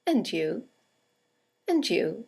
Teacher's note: to see you again and you and you is a statement it has a falling intonation and it's used to return the compliment or the greeting